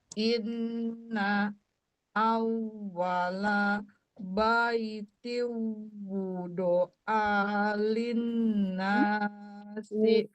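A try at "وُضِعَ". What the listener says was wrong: Wudi'a bukan wudu'a. Wudi'a.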